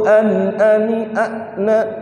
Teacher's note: pas disukun hamzah ini punya sifat syiddah. Syiddah itu suaranya tertahan.